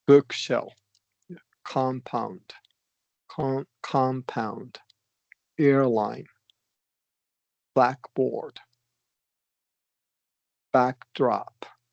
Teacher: if we're talking about compound nouns, we're going to do stress on the first syllable